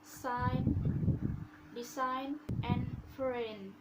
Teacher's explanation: Letter G is not pronounced before letter N. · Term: silent